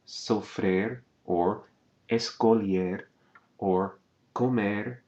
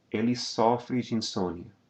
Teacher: You can hear the close vowel in the infinitive, sofrer, or escolher, or comer, but it's going to open again in the conjugation of the third person singular and plural forms.